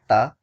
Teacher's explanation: दंत्य यानी जब आपकी जीभ दांतों से टच हो